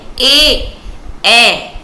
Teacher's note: कंठ तालव्य, कंठ और तालव्य से निकले।